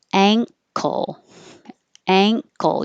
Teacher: You're going up for the NG, ang, and then you hear the K when you pull it down and release the airflow.